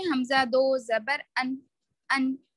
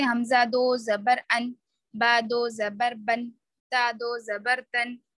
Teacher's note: تو دو زبر کی آواز میں نون کی آواز ہوتی ہے